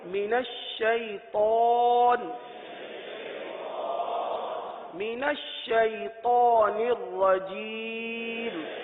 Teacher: شین کی میم نون کی ادائیگی تو بہت آسان ہے، اس میں طا آ رہا ہے، طا کو پر پڑھیں گے، طا حروف مستعلیہ میں سے، من الشیطان نہیں، من الشیطان پڑھ لیجئے، من الشیطان، من الشیطان الرجیم۔